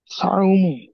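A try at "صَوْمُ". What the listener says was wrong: সাও নয়, সদ জবর স হয়, সদ অ জবর সও, মুখ গোল করে বলতে হবে। সও মু।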